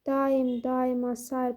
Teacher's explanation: A i saiti yanaşı gələndə bilirik ki, ora y samiti artılır və eyni zamanda da baxın a uzun tələffüz olunur